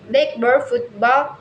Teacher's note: nouns blackbird, football usually stress the first part of the word